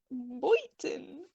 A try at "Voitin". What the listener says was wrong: No, it's Voitin. You gotta say it with the V.